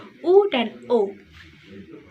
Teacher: Vokal belakang yakni vokal yang dihasilkan oleh gerakan turun naiknya lidah bagian belakang atau pangkal lidah seperti U dan O.